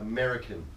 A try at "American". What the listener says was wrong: It's not Ameri. Amera.